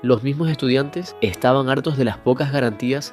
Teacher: Y en ciertos casos incluso puede debilitarse mucho hasta casi desaparecer. Esa aspiración suave de la S es también uno de los elementos que acercan el acento canario al del Caribe.